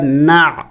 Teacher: عین حروف حلقے میں سے ہیں اور ساکن ہے تو جم کر کے پڑھیں گے